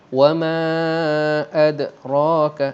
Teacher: Ra berwarna gelap, maksudnya ra di sini dibaca dengan tebal ataupun disebut sebagai ra tafkhim